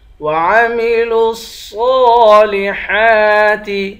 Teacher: لام کو صاد کے ساتھ ملا کر صاد کو موٹا پڑھیں گے